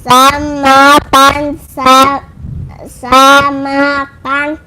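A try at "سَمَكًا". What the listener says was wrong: Sama kak. Kan panjang.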